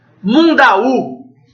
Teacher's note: Mundaú é uma palavra oxítona